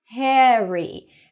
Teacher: the name Harry, is pronounced a little bit with an eh sound, Harry. And it's not Harry. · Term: American pronunciation